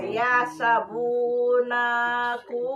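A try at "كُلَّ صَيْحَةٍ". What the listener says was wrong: Kulla Lana tolong dipanjangkan. Kulla soihatin.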